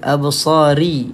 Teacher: Ra tarkik, ra yang dibaca dengan nipis.